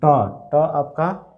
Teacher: जीभ जो है मुड़ जा रहा है, तो मूर्धन्य